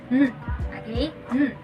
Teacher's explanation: N sound is a voiced alveolar nasal.